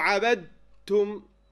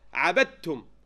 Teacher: The dal was gone. I merged completely into the next letter.